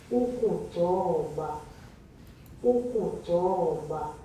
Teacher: did you hear it go low the pitch is quite low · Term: murmured